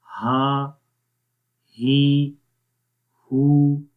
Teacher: ये है हा जो कि गले के नीचे वाले हिस्से से पढ़ा जाता है। तो इन दोनों हुरूफ की आवाज़ को आपने जुदा करके पढ़ना है।